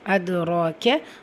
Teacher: ரா அலிஃப் சகீரா இருக்குது. 2 ஹரக்கத்தளவு நீட்டம் கொடுத்து ஓதணும்.